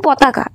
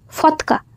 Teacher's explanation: অল্পপ্রাণ ধ্বনিকে মহাপ্রাণের উচ্চারণ করা হয়